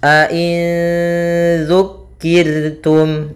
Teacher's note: Yaitu cara membacanya nun suara nun, ya, nun matinya disamarkan kepada zal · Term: ikhfa hakiki